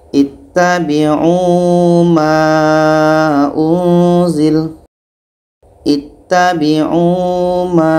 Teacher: Selanjutnya, ini untuk huruf Waw yang tidak dibaca dalam Surah Al-A'raf, ayat 3. Ini adalah huruf Waw yang tidak dibaca, didahului oleh Damma, dibaca selama dua harakat.